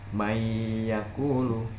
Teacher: Kuncinya adalah ketika huruf nun sukun ini bertemu huruf ya. Jadi nun sukun ini dileburkan menjadi satu dengan huruf ya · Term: idgham bi gunnah